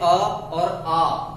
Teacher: जो जब हम अ का उच्चारण करते हैं अ और आ, तो इनका उच्चारण होता है कंठ से। हमारे कंठ से आवाज निकलती है जब हम अ बोलेंगे और आ बोलेंगे